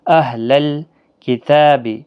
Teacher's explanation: صرف تا کے اوپر کھڑی زبر ہے، اس کو 1 الف کی مقدار کے برابر کھینچ کر پڑھنا ہے۔ لا الف مدہ ہے، غین حرف مستعلیہ ہے، خیال رکھنا اس پر قلقلہ نہیں ہونا چاہیے۔